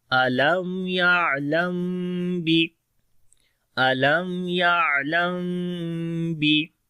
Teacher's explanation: ہونٹ تو مل جائیں گے لیکن نرمی کے ساتھ پڑھی جائے گی آواز